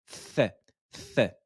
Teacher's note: La langue va ressortir entre les dents et l'air y ressort, comme le think en anglais. Th, ressortez la langue, th, posez-la sur les dents incisives supérieures et sortez la voyelle, le son est la fatha.